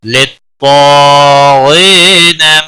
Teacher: طا حروف مستعلیہ میں سے ہے، پر پڑھا جائے گا ، الف بھی اس کے ساتھ ہے، پر پڑھا جائے گا، · غین بھی حروف مستعلیہ میں سے پر پڑھا جائے گا ، غی یا مدہ ہے ایک الف کے برابر کھینچ کر